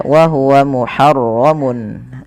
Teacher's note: Nah, pada lafal mun ketemu ain, ini harus dijelaskan suara tanwinnya karena adanya tanwin bertemu dengan huruf ain yang dimana ia termasuk daripada bacaan izhar halqi, maka harus dibaca dengan jelas.